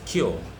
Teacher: in received pronunciation, the r sound is usually not pronounced after a vowel sound, while in American English, the r sound is usually pronounced after a vowel sound.